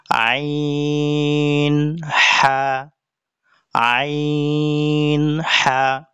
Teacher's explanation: হালকের কন্ঠনালীর মধ্য হতে দুই নাম্বার মাখরাজ হালকের কন্ঠনালীর মধ্য হতে আমরা হামজা যেখান থেকে উচ্চারণ করেছি তার থেকে একটু উপরে যে মধ্যবর্তী আমাদের কন্ঠনালী আছে এই কন্ঠনালী থেকে আইন হা আইন হা উচ্চারিত হবে